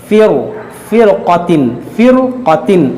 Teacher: तो इसको जो है इस रा को भी मोटा पढ़ेंगे, फ़िरक़तिन, फ़िरक़तिन, इस रा को भी मोटा पढ़ेंगे। रा साकिन के बाद हुरूफ़ मुश्तालिया उसी कलमे में है, इसलिए इस रा को भी मोटा पढ़ा जाएगा